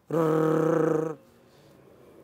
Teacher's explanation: It strikes several times, like you are playing tabla. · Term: trill